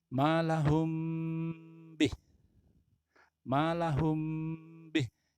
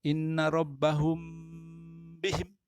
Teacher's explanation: Ya, mim ada mim sukun kemudian bertemu dengan ba ya, membacanya itu harus mendengung. Mendengung itu ditahan sebentar. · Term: ikhfa syafawi